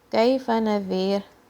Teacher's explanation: ذال from the tip of your tongue, and this ra is light